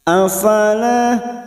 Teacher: huruf lam yang diikuti Alif dua harakat kita panjangkan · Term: Mad thii, mat tabi'i